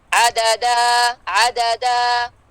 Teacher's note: عددا مت طبیعی to count حالت وقف میں